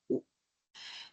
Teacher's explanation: Es una alta y es una posterior